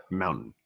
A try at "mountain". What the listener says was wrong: I think it's just because you said it with a D and not with a T.